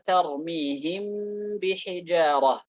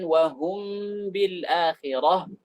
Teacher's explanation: mim diikhfakan ketika bertemu dengan ba dengan apa? Dengan ghunnah. Ma'a baqa'il ghunnah, dengan ghunnah yang dilebihkan. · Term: ikhfa syafawi